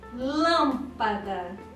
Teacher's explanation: Viram que a pronúncia forte, a sílaba forte cai na antepenúltima. A última é da, a penúltima pá e a antepenúltima lam. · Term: proparoxítona